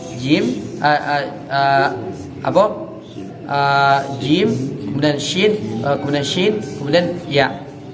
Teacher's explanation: Jadi di al-lisan, di wasatul lisan, Pak, di pertengahan lidah hurufnya cuma ada 3. Jim, shin dan ya. Walaupun 3 huruf makhrajnya sama, Pak, akan tetapi secara kekuatan itu berbeda.